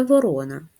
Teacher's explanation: перший звук в слові ворона звук в приголосний твердий другий звук о голосний третій р приголосний твердий четвертий о голосний